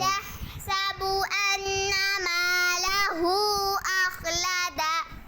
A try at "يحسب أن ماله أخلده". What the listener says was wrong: देखो अपनी मद भी छोड़ी और गुन्ना भी। यहसबु अन्ना मालहू अखलदह। मदन मालहू